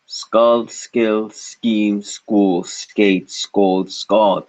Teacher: it's the K in skate no air should be felt on the hand